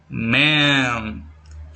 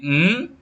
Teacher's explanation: You can feel the vibration when you say m. That's the voicing. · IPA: /m/